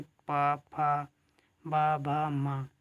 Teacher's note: ओष्ठ व्यंजन है जिनमें ओंठों के सहारे जो वर्ण हैं वो ओंठों के सहारे निकलेंगे, बिना ओंठ आपस में मिले आप उन्हें बोल नहीं पाएंगे, जैसे पा, फा, बा, भा, मा।